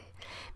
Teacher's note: En América, un hablante de las tierras altas, un hablante mexicano del interior, pues lo dice tan reducido que prácticamente suena la p y la s, no "pues" pierde casi la vocal para quedarnos prácticamente ps